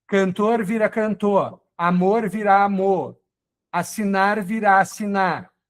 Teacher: A terminação em R que a gente corta